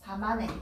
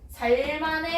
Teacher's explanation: 살만해 아니고 리을 미음 중에 리을을 탈락시켜서 사만해입니다